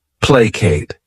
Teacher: This word has 2 syllables, and the stress is on that first syllable. Placate. What it means is to appease by giving something up.